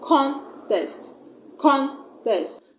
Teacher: I have stressed on the first syllable, contest.